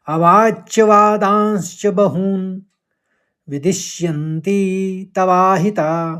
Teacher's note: बहुन बहू दीर्घ होगा क्योंकि बड़े ऊ की मात्रा है और न जो है हस्व होगा उसको आपको एकदम बलना है